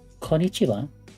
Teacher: say the single N individual and not just combine it with the following sound